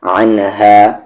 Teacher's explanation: عین کا مخرج بیچ والا حلق اور اس ہا کا مخرج نیچے والا حلق، باٹم تھروٹ